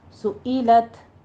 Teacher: सुइलत में सुई नहीं कहना है, हमज़ा है, हमज़ा ई, सुइलत।